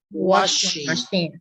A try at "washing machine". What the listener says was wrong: The sound is not ch, it's washing. Shh. Say shh. Washing.